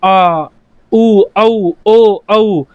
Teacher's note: आपको महसूस होगा कि आपकी जीभ पीछे से ऊपर उठी है, न तो बीच में से उठी न आपकी आगे से उठी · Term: पश्च स्वर